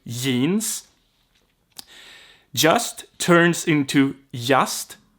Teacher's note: because j is ye in swedish · it's very common to skip the z and skip the g